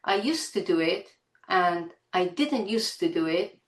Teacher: So the 'd' is dropped. Now in spoken English, really there is phonetically absolutely no difference whether we have a 'd' there or not. For example, if I say: I used to do it, and I didn't used to do it, there's absolutely no phonetic difference.